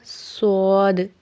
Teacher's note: صاد کو ہم نے اوپر اور نیچے کے دانتوں کو آپس میں ملانا ہے، اور زبان کی نوک کو ہم نے نیچے والے دانتوں کے سرے کے ساتھ لگانا ہے